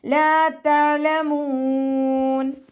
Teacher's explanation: ലാമിൻ്റെ കൂടെ അലിഫ് മദ് വന്നു, 2 കൗണ്ട് മാത്രം നീട്ടി കൊടുക്കുക. ഐൻ കൊൽക്കല ലെറ്ററില്ലാത്തത് കൊണ്ട് ഹാഫ് സുക്കൂന് കൊടുക്കാനായിട്ട് ശ്രദ്ധിക്കുക.